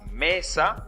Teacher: manera aumenta su fuerza cuando pronunciamos esa sílaba otra vez mesa se nota la fuerza en me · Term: sílaba tónica